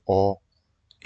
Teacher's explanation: ए करोगे तो अब ए में ऐसा, ऐसा चपटा हो जाएगा आपका मुंह